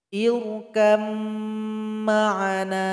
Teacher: huruf ba yang bertemu mim, maka ba tidak dibaca lagi karena dia sudah bergabung 100% kepada huruf mim. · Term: idgham mutajanisain